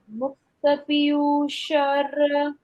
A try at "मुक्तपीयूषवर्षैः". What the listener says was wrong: पीयूषर नहीं, ये व के बाद आता है वो र। वर्षैः। मुक्त पीयूष वर्षैः।